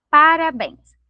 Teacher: Se a gente separar aqui, ó, a gente vai observar que a sílaba tônica da palavra parabéns se encontra lá na última sílaba